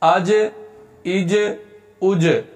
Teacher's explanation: آگے جیم ہے، جیم حروف قلقلہ میں سے ہے لہذا اس کو ہلا کر پڑھیں گے